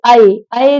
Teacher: तो बेटा अय, अय जब आप बोलेंगे, देखिए अय, अय जब आपने बोला तो आपके कंठ से आवाज आई, तो नेचुरल बात है कि कंठ तो होगा ही होगा। और अय, अय आप बोलते हैं तो आपकी जीभ तालव्य की तरफ चलती है, तो अय किससे बोला जाता है बेटा, कंठ तालव्य से।